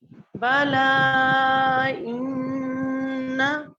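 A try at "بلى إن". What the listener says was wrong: बला, बला नहीं, बा की जबर को खींचेंगे नहीं, बला इन्ना,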